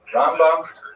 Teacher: Rambam is pronounced with the emphasis on the first syllable, Rambam. And Ramban is pronounced with the emphasis on the second syllable